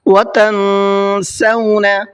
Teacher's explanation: تن کے اندر اخفا کریں گے، اس لیے کہ یہاں پر نون ساکن کے بعد میں سین آ رہا ہے، جو حروف اخفا میں سے ایک حرف ہے سین۔